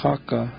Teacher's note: When we say chaka, then that H is guttural, so you put a dot above that H.